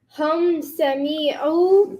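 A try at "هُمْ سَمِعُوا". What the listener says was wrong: The me was too long again.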